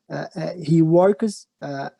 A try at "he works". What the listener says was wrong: But don't say he works because like this you added a syllable. في الحالة دي أنت ضفت مقطع هنقولها he works. He works بنتقل من صوت الك لصوت الس على طول. He works. He works near here.